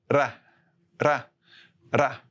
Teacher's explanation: For the Spanish single R, you have to focus on just using the tip of your tongue on that ridge. You push air over the tongue and you make the flap sound, which is ra, ra, ra, like that.